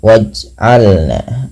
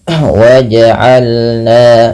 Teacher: pantulkan bunyi suara pada lafal huruf jim yang berharakat sukun